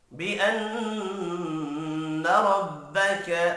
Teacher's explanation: نون مشدد پر غنہ کریں گے، ربک را زبر کی وجہ سے پر پڑھا جائے گا۔